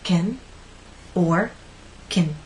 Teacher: unstressed that vowel sound becomes shorter and we can say it either as kin or kin that's · When we stress this verb, we say can. Unstressed, that vowel sound becomes shorter